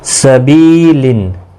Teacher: سبیلن بی یا مدہ ہے، تنوین کے بعد حلقی حرف ہے، اظہار حلقی ہوگا، گنہ نہیں کریں گے